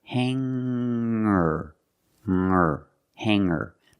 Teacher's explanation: i don't pronounce the G sound it's just the nasal M link together with the r together